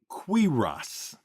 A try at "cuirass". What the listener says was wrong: Wait, you're pronouncing your I is in kit. It should be cuirass. Cuirass. Cuirass. A is in bad. Cuirass. Cuirass. Cuirass.